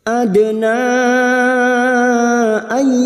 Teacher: nun sukun bertemu ya idgham bi gunnah siap masuk pada huruf ya dan mendengung selama 3 harokat.